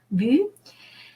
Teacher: Lips staying for U, and the inside of the mouth we say I.